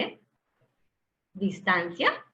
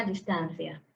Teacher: en muchas regiones de latinoamérica la pronunciamos como una s cuando en españa pues se pronuncia diferente